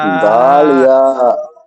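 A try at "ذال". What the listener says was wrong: দাল কেন বলছেন আপনি? না, জা নয়, জাল। জাল ইয়া জের জি।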